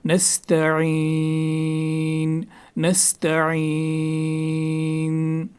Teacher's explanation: نستعین میں عین جو ہے، عین کو حلق کے درمیانی والے حصے سے نکالنا ہے